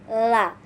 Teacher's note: Huruf lam ini dibunyikan dari ujung sisi lidah hingga bertemu dengan gusi atas di hadapannya.